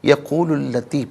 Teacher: یقولو میں لام پر پیش ہے، اس سے التی کی لام کے ساتھ ملائیں گے، درمیان میں سے الف یعنی حمزہ کو حذف کریں گے، یقول التی پڑھا جائے گا۔